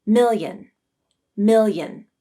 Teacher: the airflow to travel along the top of the tongue yeah if you say this word slowly you will hear a small e sound as you transition from mil to in million now speed it up to get rid of the e